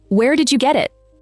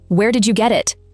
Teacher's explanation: And did you collapses into almost a single sound. And the T at the end of get runs straight into it. So the last 2 words become one. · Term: linking